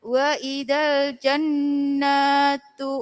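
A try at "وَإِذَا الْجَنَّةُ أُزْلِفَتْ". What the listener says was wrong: Nanya pendek. Wa idzal jannatu. Jannatu. Nanya pendek. Jannatu.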